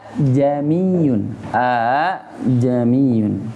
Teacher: bukan mirip ke ha, tetap dia a, hanya saja lebih berat. Lebih berat yang keduanya. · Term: Tashhil